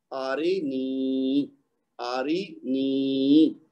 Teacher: حمزہ کو بھی ایک حرکت دینی ہے، را کو بھی ایک حرکت دینی ہے، لیکن نون کو 2 حرکت دینی ہے کیونکہ اس کے ساتھ یا مد جڑی ہوئی ہے